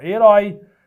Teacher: Quando eu falo a palavra herói, herói é uma oxítona que termina com esse ditongo aberto, ó. Herói.